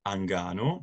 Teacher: we have the lengthening of the stress vowel and the syllabic nasal is retained and reworked